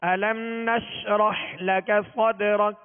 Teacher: نش آواز شین کو ادا کرتے ہوئے منہ میں پھیل جائے گی مگر اس میں بھی قلقلہ نہ ہو. نشرح حا کو وسط حلق سے واضح ادا کرنا ہے. اسی طرح لکا دونوں پر زبر ہے، اس کو کھینچنا نہیں، بغیر کھینچے منہ اور آواز کھول کر ادا کرنا ہے. · حروف قلقلہ میں سے دال ساکن ہے، اس پہ قلقلہ کریں گے، اور آخر میں کاف کو ہم ساکن اس لیے کریں گے کہ یہاں ہم نے وقف کیا.